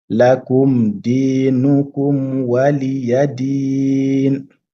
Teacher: Lakum dinukum. Donc là, il faut bien prononcer le dal. Di, c'est deux temps.